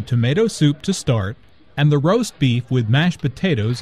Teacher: Notice also that tomato soup, roast beef and mashed potatoes are compound words. The stress falls on the second word in each phrase.